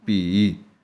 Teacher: ਲੰਬੀ ਆਵਾਜ਼ ਜਾਂਦੀ ਹੈ ਈ ਜਿੰਨੀ ਮਰਜ਼ੀ ਲੰਬੀ ਬੋਲੀ ਜਾਓ ਸੋ ਇਹ ਲੰਬੀ ਬੋਲਣ ਵਾਲੀ ਇਹ ਦੀਰਘ ਮਾਤਰਾ ਹੈ।